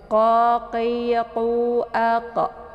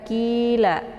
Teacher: Kemudian qi dibaca tebal. Makharijul huruf qi itu tepatnya di pangkal lidah.